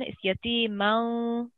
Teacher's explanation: It is an ikhfa and light nasal sound like you're doing. So it's a light nasal sound on the man.